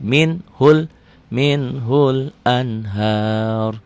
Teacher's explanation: Roknya tafhim. Kenapa? Karena sebelum rok mati barisnya di atas.